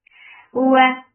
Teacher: makhraj of waw circling your lips, for fatha open jaws.